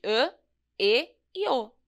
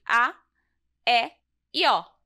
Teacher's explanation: Tem esse "chapeuzinho" e esse "risquinho". O chapeuzinho é o circunflexo, e ele representa o som mais fechado. Então, essas letras ficam com som de "â, ê, ô". · Então, essas letras ficam com som de "â, ê, ô". E o agudo, que é o risquinho, representa o som mais aberto, e essas mesmas letras ficam com som de "á, é, ó".